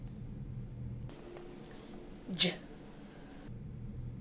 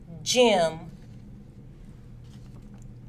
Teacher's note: The tongue is near or touching the back of the mouth. It is an affricate sound and is voiced. The vocal cords vibrate.